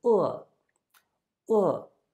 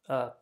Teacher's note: with a tone it's a falling tone fourth tone